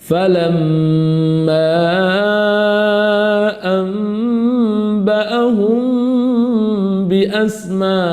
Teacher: Iqlab dan ikhfa syafawi maka dibaca sama, yakni disamarkan pada mim yang dibaca sakinah tersebut.